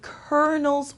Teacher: For example, I had to follow the colonel's orders. So here, the L sound is not pronounced at all. It turns into an R.